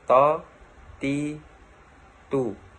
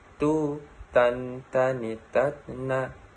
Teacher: Melafalkan huruf to dengan menyentuhkan ujung lisan dengan tempat tumbuhnya 2 gigi seri bagian atas.